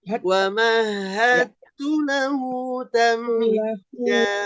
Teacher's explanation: Idgham meleburkan, mutajanisain itu huruf yang sejenis. Jadi dal dengan ta ini hurufnya keluarnya tempatnya sama, ya, di ujung lidah. Ya. Yang mana ketika bertemu, maka hurufnya langsung ke ta, Bu. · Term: idgham mutajanisain